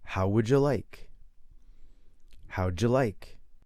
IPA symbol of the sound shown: dʒi